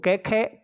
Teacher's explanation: क ख क वर्ग के वर्ण कोमल तालव्य वर्ण कहलाते हैं